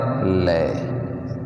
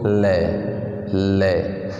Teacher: जीभ दांतों को स्पर्श करेगी नीचे से उठकर, और स्पर्श करने के बाद दोनों तरफ से जगह जो खुली रहेगी उसमें से अपनी हवा निकलेगी और उच्चारण होगा लय।